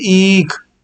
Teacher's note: एक ह्रस्व ई होता है, एक दीर्घ ई होता है, इसमें लंबा समय लगता है